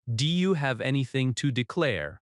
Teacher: In natural speech, do you often sounds like du.